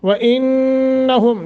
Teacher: नून मुशद्दत है, गुन्ना करके पढ़ेंगे